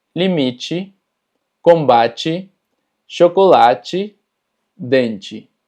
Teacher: cuando las palabras terminan en TE, normalmente TE se pronuncia como chi